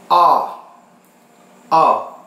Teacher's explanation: Dan lidah bagian belakang kita itu ke belakang. Dan posisinya lebih ke bawah. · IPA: ɒ